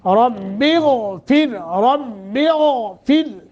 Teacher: غین کو موٹا کرنا ہے، را باریک